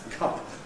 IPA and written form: kʌp (cup)